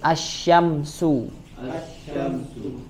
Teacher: Maka alif lam di sini melebur ke huruf setelahnya. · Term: asyamsiyah